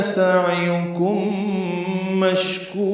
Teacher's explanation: سعیکم عین ساکن پہ اظہار، کم میں میم ساکن کے بعد میم آنے کی وجہ سے ادغام ہے، ادغام میں ادغام مثلین یا ادغام شفوی ہے، غنہ کریں گے.